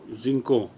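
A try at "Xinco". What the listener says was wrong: Inco, most probably. I think the X is not pronounced. Most probably, I'm not very sure.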